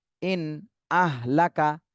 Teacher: নুন সাকিনের পরে ইজহারের হরফ আসছে, এজন্য এই নুন সাকিনে স্পষ্ট করে পড়তে হবে।